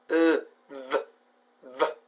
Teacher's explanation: This means that you create friction between the bottom lip, this one, and the top teeth, these ones, okay? The V sound is made through the mouth and it is voice. It's voice, which means that you produce the sound by vibrating your vocal cords. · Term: voiced labiodental fricative